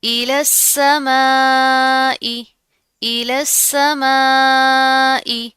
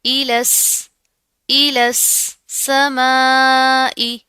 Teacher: सीन के ऊपर तशदीद आ रही है, इसको हम लाम के साथ, इस लाम को इस सीन के साथ मिलाकर पढ़ेंगे